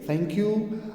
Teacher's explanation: the tongue tip it comes between upper teeth and lower teeth so it is a little bit outside it is now between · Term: interdental sound